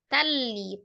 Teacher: Idam ditasdid saja tetapi tidak disertai dengan dengung